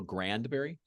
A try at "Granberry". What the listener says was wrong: Granberry, no D.